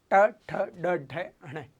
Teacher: तो जब आप बोलोगे ट ठ ड ढ ण, तो जीभ मुड़ेगी और मूर्धा पे टच करेगी · तो जीभ मुड़ेगी और मूर्धा पे टच करेगी, यानी इसका उच्चारण कहाँ से होगा, मूर्धा से।